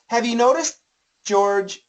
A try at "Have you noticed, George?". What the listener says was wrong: It's got the S needs to stop more.